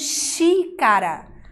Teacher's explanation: Nós vemos aqui que a sílaba tônica é o xi.